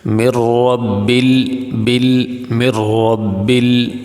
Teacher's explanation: تو اب یہاں پہ لام ساکن ہے، لام حروف قلقلہ میں سے نہیں، اس لیے لام کو ہلا کے نہیں پڑھیں گے